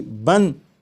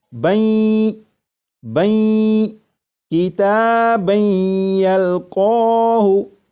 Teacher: جب تنوین کا یا میں ادغام ہوگا تو درمیان میں جو نون ساکن کی آواز آ رہی ہوگی وہ پھر اس طرح سے آواز نہیں آئے گی بن، بلکہ وہ آواز اس طرح ہوگی بین بین کتابن یلقاہ۔